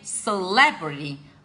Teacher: the stress is given on the second syllable